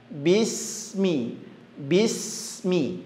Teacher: Bismi, sinnya memiliki sifat hamas, ngalirkan.